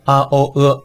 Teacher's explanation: o▁和▁e▁只是一个圆一个展